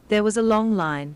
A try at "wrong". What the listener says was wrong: 그 다음에 long line 그랬으니까 long과 wrong의 발음 오답이기도 합니다.